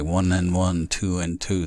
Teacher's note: oftentimes the D is elided, it's skipped. For instance, we say 1 and 1, 2 and 2, the D is skipped out.